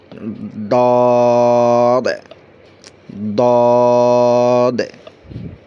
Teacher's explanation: সেটা হলো আপনার জিহ্বার গোড়া আর ওই গোড়া বরাবর যে মাড়ি আছে দাঁতের, বিশেষ করে ডান পাশ থেকে বলতে সুবিধা হয়। জিহ্বার গোড়া আর মাড়ি দাঁতের গোড়ার সঙ্গে লাগাইয়া।